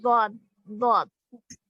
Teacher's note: صاد جی ضاد ضاد حروف جی حافیہ ہے نا، جی. حافت اللسان سے ادا ہو رہا ہے